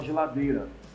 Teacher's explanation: E em geladeira é um caso mais sério, porque o I não é nem pronunciado, a gente fala geladeira.